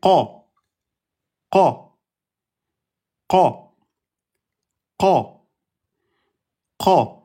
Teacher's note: Alors, on a la lettre, le plus au fond, c'est la lettre qaf. La lettre qaf, c'est le fond de la langue, au contact du palais mou. Donc, c'est pas la base de la langue, comme pour les lettres de la gorge, mais là, c'est le fond de la langue.